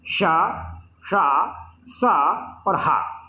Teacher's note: ऐसा लगता है कि उच्चारण में रगड़ होती है, मुंह के अंदर जीभ रगड़ खाती है और ऊष्मा से उत्पन्न होती है, गर्मी से उत्पन्न होती है, एक प्रकार की सुरसुराहट से उत्पन्न होती है। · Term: संघर्षी व्यंजन